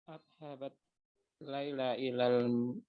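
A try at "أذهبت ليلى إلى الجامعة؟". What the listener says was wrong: Bukan adhabat, A-nya itu A pertanyaan. A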